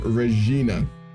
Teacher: The classical Latin pronunciation of Regina has a rolled R and has a strong G sound in the middle.